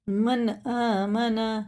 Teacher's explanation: باریک پڑھا جائے گا، من آمن، یہ اظہار کا قاعدہ ہے، نون ساکن کے بعد الف آ رہا ہے تو اس کو ظاہر کر کے پڑھنا ہوتا ہے